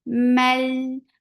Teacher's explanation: this is idgham without gunna. So we are not keeping the sound in our nose.